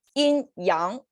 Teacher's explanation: Okay, actually it's not right tone, right? Yin yang, yin flat tone, yang second tone